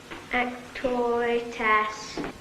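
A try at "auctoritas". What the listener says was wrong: Not as. Arse. Lord knows you should be able to pronounce that.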